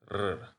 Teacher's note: Note also that the R in Latin is trilled, just like in Spanish